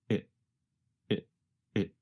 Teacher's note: what is it called what is becomes reduced to what is the letter T in what changes to a sound closer to the letter D and the word it goes by so fast that it becomes very reduced to just a vowel sound plus a very fast held T